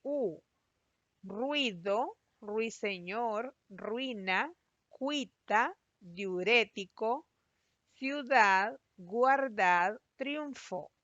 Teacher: cada una de esas palabras que se ha separado en sílabas el diptongo se conserva unido no ha habido una separación de esas dos vocales